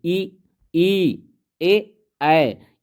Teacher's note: जिसमें जीभ का जो आगे का हिस्सा जो उठता है उसे हम अग्र स्वर कहते हैं